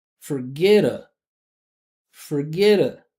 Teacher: since that first syllable here is unstressed we're going to make it a schwah